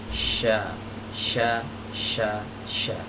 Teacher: Tempat keluarnya tengah lidahnya naik. Ya, ke atas ke arah langit-langit, tapi nggak sampai nempel ya. Dia mendekat ke arah langit-langit. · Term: huruf shin